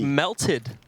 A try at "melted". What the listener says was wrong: you say it like there's an i in there